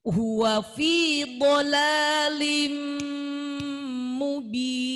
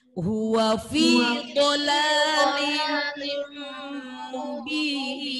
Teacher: Tanwin, dolalin, ketemu mim, jangan dibaca dolalin, langsung dolalim, 2 ketukan.